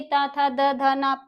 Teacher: इनको बोलने से हमारी जो जीभ है वो दांतों को टच करती है